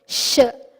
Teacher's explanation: So Sh, when we say Sh, the air has to come out, but more through the sides. So the tongue should not touch the palate, the top of the mouth. It should not touch it, not fully. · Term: Shakara